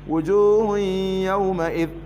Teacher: تنوين حكمه الإدغام بغنة لذكر الياء بعده والياء من حروف الإدغام بغنة